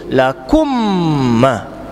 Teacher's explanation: dengung kena mesti dua harakat. Tutup mulut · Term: idgham mislain